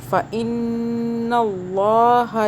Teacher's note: نون مشدد ہے، یہاں پہ غنہ کر رہے ہیں ہم، رک رہے ہیں، ہولڈ کر رہے ہیں ناک میں آواز